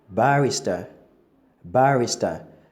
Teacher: The stress is on the bar. So they pronounce it as the next word I have on my list, barista.